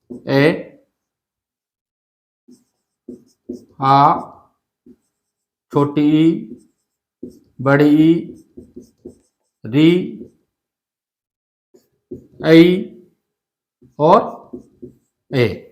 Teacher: होठों की आकृति या बनावट गोल नहीं होती है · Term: अवृत्ताकार स्वर